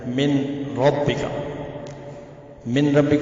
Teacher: اگر نون ساکن تنوین کے بعد اگر لام آ جاتا ہے یا را آ جائے تو نون ساکن تنوین کی آواز کمپلیٹلی غائب ہو جاتی ہے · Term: ادغام تام